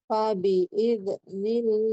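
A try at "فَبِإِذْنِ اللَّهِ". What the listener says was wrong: Tidak mantul. Fabi'iznillahi. Hati-hati huruf hati-hati huruf zal. Jadi tidak dipantulkan. Fabi'iznillahi. Jadi itu kan mantul. Fabi'iznillahi. Jadi nggak boleh dipantulkan di dalam, meskipun di dalam tapi kedengaran yang mendengarkan. Kan di dalam kedengaran.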